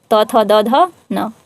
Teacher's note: तो दंत से हो रहा है उच्चारण तवर्ग